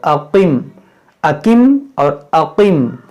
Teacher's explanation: یہ قاف مشتعلیہ ہے، ہم نے آپ کو پہلے بتایا، اور اس کو موٹا پڑھیں گے